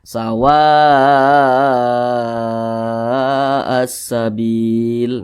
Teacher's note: masih di satu kata maka namanya menjadi mad wajib muttasil ini mad wajib muttasil itu panjangnya itu 5 harakat atau kira kira-kira lima ketukan